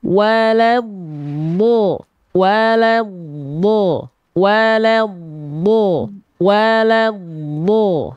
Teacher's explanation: antara lat dengan do nggak boleh ada jeda hening. Dot punya sifat yang namanya rokhwah. Dia harus mengalir suaranya.